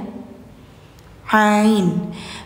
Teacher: Ain. Jadi bacanya itu di bainiah, sifatnya bainiah. Jadi ada mengalir dikit